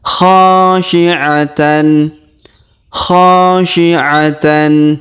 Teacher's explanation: Huruf kha kita panjangkan 2 harokat karena terdapat alif di depannya.